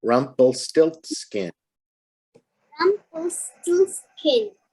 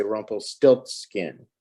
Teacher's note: You have a little bit more voice power on the stilt part.